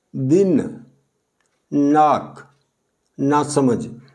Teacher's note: जबकि ये जो दंते ना है, इसका जब हम उच्चारण करते हैं तो जीभ ऊपर वाले दांतों को छूती है, ये दांतों से स्पर्श करती है।